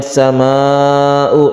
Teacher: ini adalah mad wajib muttasil kita panjangkan dua setengah Alif